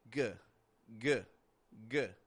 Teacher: Your tongue rises in the back, right? It rises in the back. It touches your soft palate. It makes some pressure there. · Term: G sound